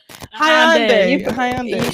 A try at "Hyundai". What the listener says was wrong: She pronounced every letter. She's pronouncing every letter in Hyundai.